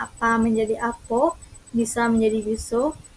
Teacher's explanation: Ciri utama bahasa Palembang adalah perubahan vokal akhir A menjadi O.